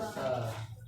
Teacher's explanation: दांत उच्चारण में दांत यानी जीभ में क्या सट जाए क्या कहलाएगा दते कहलाएगा दते वर्ण कहलाएगा जैसे त जीभ में सट रहा है देखो त जीभ और दांत सट रहा है ना